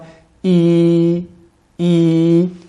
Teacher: lorsque nous prononçons la lettre I nous avons le milieu de la langue qui s'élève